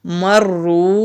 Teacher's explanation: के ऊपर पेश होती है तो रॉ को मोटा पढ़ते हैं वह से पहले पेश हो तो वो मतदा होता है यानी की आप दो सेकंड के लिए आवाज़ को खींचकर पड़ेंगे तो हमने पढ़ा मारू यहां से पहले मतदा है एक अलिफ